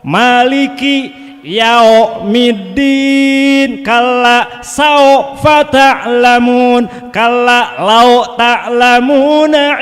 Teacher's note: membaca wawu mati cenderung ke suara o. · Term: huruf lin